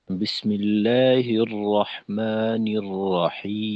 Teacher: আর আরেকটা বিষয়, এটা হলো যে আয়াতের শেষে যদি রিখওয়া তাওয়াসুদের হরফ থাকে, সেক্ষেত্রে ওই হরফটাকে আরেকটু চালু রাখা, যেমন আউযু বিল্লাহ বিসমিল্লাহর মাঝে বিসমিল্লাহির রহমানির রহিম, শেষের মিমটাকে একটু হালকা আওয়াজটা ধরে রাখা, যেন সাথে সাথে বন্ধ না হয়ে যায়।